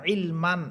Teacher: আর যদি না থামেন তাহলে সেখানে কোনো টান হবে না, সেখানে শুধু তানবিন পড়বেন, ইলমান, এইভাবে।